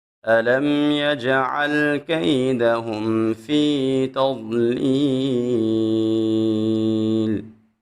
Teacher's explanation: ضاد کو خوب موٹا پڑھیں گے۔ جب ہم نے ضاد کو ادا کرنا ہے نا تو اپنی زبان کی سائڈ اوپر کی 5 داروں کے ساتھ لگائیں گے تو ضاد وہاں سے بالکل صحیح طریقے سے ادا ہوتا ہے۔